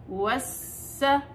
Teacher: واو واو فتحة سين شدة وس، سين فتحة س وس، واعطي زمن السين لأنه السين رخاوة